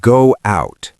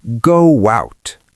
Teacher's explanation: Your lips are round for go. So a W naturally appears.